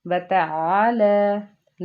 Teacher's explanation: لام کو نرمی سے پڑھیں گے اور کھڑے زبر کے ساتھ ایک الف کے برابر لمبا پڑھیں گے، اور جو عین کے بعد الف تھا اور الف کے اوپر کوئی حرکت نہیں، اس کا مطلب ہے الف مدہ ہے کیونکہ اس سے پیچھے زبر چل رہی ہے، اس کے پیچھے زبر ہے اس لیے ہم ایک الف کے برابر اس کو بھی لمبا کریں گے۔